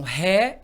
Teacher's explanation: a terminação réia o i vai ser semivogal porque é mais fraquinho e o a vai ser vogal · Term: ditongo crescente